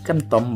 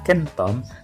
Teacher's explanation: kata kemtom berubah menjadi kata kentom dengan penggantian bunyi konsonan M dengan konsonan N